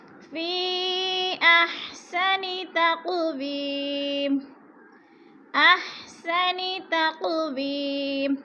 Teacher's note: इंसाना फ़ी अहसनी, हरूफ़ मद्दा के बाद हमज़ा दूसरे कलमे में है तो इधर मद मुत्तसिल हो रही है। फ़ी पे चार अलिफ़ी मद है, चार अलिफ के बराबर खींच कर पढ़ना है।